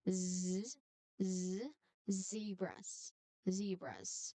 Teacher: the tip of your tongue it comes very close to the gum ridge without touching it. You just try try to create a narrow a little air channel and then after that you push a steady stream of air through the small p um small space. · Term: Z sound